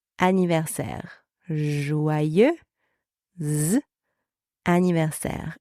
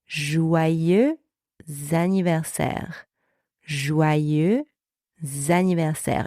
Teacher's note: You can hear that the two words are now linked as if they were one word. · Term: liaison